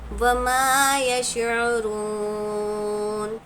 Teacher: میم کی آواز کو ہم ظاہر کر کے پڑھیں گے، اظہار شفوی کا قاعدہ ہوگا۔